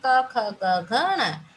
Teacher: और इसका जो उच्चारण स्थान है, इसका उच्चारण स्थान होता है कंठ्य। कंठ यानी गले से हम इसका उच्चारण करते हैं